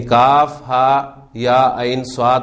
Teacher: اس طرف عین، اب عین میں یا ساکن سے پہلے زبر ہے، حرف لین بن گیا اور اس کے بعد ساکن آ رہے ہیں، لہٰذا آپ اس کو لمبا کر کے پڑھ رہے ہیں